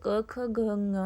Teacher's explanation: आवाज कंठ से आती है। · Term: क वर्ग